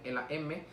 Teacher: en el modo de articulación es también nasal porque interviene el paso de aire se da por la nariz